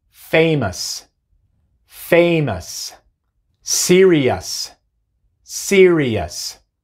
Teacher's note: Y ese sufijo siempre se pronuncia us. O sea, la O y la U se pronuncian como el schwa, y luego la S